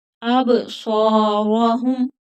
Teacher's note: अब आवाज को रोकना नहीं है। अब सौहुम, स्वाद मोटा पढ़ा जाएगा, हरूफ मुस्तालिया है और थोड़ा खींच कर पढ़ेंगे